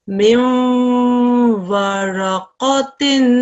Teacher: a wa mushaddad straight after a noon sakin, assimilation will take place for 2 seconds